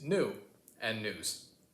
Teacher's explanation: sometimes we don't really do the yeah. We kind of just turn it into a ooh.